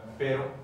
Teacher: like a quick tap of the tongue on the ridge